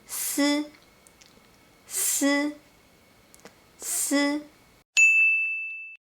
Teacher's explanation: you don't need to block the air, just let the tip of your tongue close to the upper front teeth.